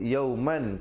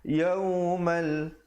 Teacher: Kalau yauman jadi izhar, walaupun asalnya mim tanwin dua di atas bunyi man, tapi bila datang lam hukumnya idgham bila gunnah. Yaumal terus masuk di atas lam.